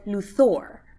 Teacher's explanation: But the movie and Lois and Clark both said Luthor. Accent on the second syllable.